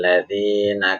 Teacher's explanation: karena lamnya enggak jelas maka disebut alif lam syamsiyah